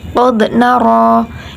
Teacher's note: ada zal harus dipantulkan karena bacaan qalqalah sughra